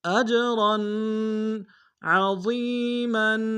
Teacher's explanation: عین کو گہرائی سے ادا کریں گے.